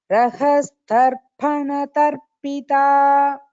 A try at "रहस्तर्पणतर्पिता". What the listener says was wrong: Rahastarpana tarpita. No Mahaprana in Rahastarpana tarpita.